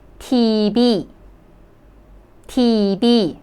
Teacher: TV actually in Korean, they don't have V sound. Only they have B. B sound. So they would pronounce it as TB.